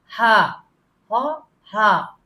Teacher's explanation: جو ہاں ہے دو آنکھوں والی, یہ بالکل نیچے سے آئے گی, جہاں پہ ہمارا پینڈنٹ ہوتا ہے, ہماری ہنسلی کی ہڈی ہوتی ہے, وہاں سے ہاں ہاں ہاں.